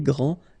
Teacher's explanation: This final D is not pronounced. Okay, so grand, and then the feminine form, grande.